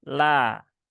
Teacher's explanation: padahal lam itu dia ketika pada lafadz Allah yang didahului harokat kasroh, maka dia dibaca dengan tipis. Maka bukan le, tetapi la.